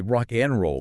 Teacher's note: The and is literally just a single letter N floating between the words. · in fast speech the a becomes a schwah and the d often disappears entirely